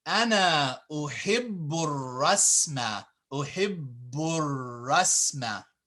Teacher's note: you would connect this boo to the ra when you're reading for the sake of fluidity